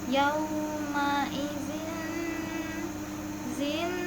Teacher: Yauma izin idgham bigunnah karena ada tanwin kasroh bertemu dengan huruf nun. Cara bacanya dimasukkan langsung dengan huruf nun sambil berdengung.